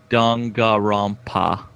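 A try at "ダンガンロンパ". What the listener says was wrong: Dangan. There's an N there.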